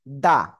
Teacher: জিহ্বার আগা সামনের উপরে দুই দাঁতের গোড়ার সাথে লাগবে